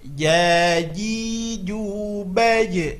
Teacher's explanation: di sini perlu diperhatikan makhrajnya adalah tengah lidah ke tengah-tengah langit atas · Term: huruf jim